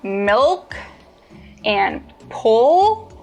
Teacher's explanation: produce the dark L, the back of your tongue bunches.